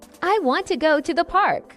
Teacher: the important words are want, go, and park. The rest are spoken quickly. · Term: sentence stress